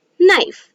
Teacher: we can hear only the sound of n but we cannot hear the sound of k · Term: the k is silent